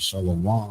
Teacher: more usually the final syllable of the word is accented or stressed.